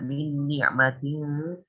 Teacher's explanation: Sehingga ketika mendengung tersebut, samar tersebut, kita harus memasukkan lidah kita ke huruf selanjutnya, yaitu huruf ta. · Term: ikhfa